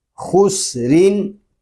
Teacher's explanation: سین کو باریک پڑھیں گے